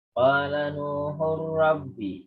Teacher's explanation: Tanwin bertemu ra. Jadi sekedar double ra-nya. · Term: idgham bila gunah